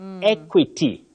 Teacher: It takes the mid-front sound E. That is, letter E takes the mid-front sound E.